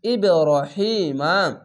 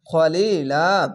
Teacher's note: জের পাশে ইয়া সাকিন এক আলিফ টেনে পড়বেন, খার যাবার এক আলিফ টেনে পড়বেন।